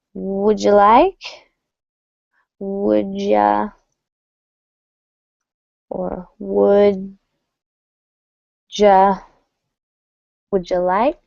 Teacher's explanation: You may not even hear the W. But when the D and the Y come together, it's going to sound almost like a J.